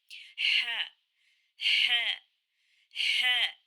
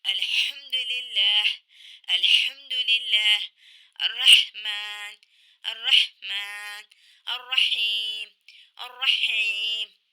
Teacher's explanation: ح اس طرح سے ہے مخرج کہ کوئی جب زور سے دوڑ لگاتے ہیں یا کچھ تیز مرچی کھا لیتے ہیں تو بندہ اس طرح سے کہتا ہے کہ تو یہ درمیانی حلق وسط حلق سے ح ادا ہوتا ہے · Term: ح کا مخرج